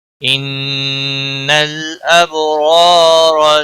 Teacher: نون مشدد پر غنہ ہوگا، لام ساکن کو ہلانا نہیں۔